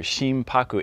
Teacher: So when you combine the word together, Shimpaku, it's still an N in the middle, Shimpaku. But when you roll the N into the P, in Japanese it actually does become kind of an M sound. So it can be written and it is pronounced as Shimpaku with an M.